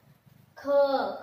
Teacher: ख के लिए ज्यादा समय लगता है, तो यहाँ पे ख जो है महाप्राण होता है